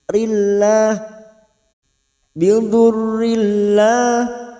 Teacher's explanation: ra yang berharokat kasrah tanwin bertemu lam idgham bila guna, masuk ke huruf lam hanya masuk tanpa mendengung